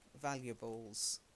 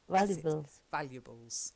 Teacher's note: so slightly silent a in the middle